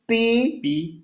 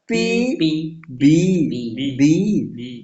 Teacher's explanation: जैसे sound like पी, पी देखो दोनों लिप, पी ऐसे लिप जुड़कर फिर अलग होते हैं। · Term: लेबियल साउंड्स